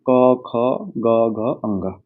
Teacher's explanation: इनका उच्चारण थ्रोट यानी कि कंठ से होता है। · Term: क वर्ग